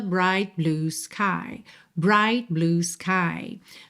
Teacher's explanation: Você reparou que você quase não ouviu esse t do bright.